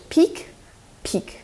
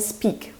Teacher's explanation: In speak, this a P is unaspirated and much cleaner and almost no air burst